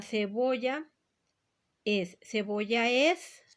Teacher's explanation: diferente este efecto se llama sinalefa sinalefa que quiere decir que estoy juntando estas dos vocales como si fuera una sílaba es decir la última vocal de una palabra y la primer · la última vocal de una palabra y la primer vocal de otra palabra. Las puedo juntar porque por sonido, por pronunciación, se hace una sílaba.